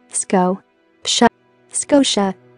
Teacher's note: the stress is on sco, the first syllable. Therefore, the sound of a in the second syllable becomes weak · as the TI combination together sounds SH, the I sound in the combination is not said again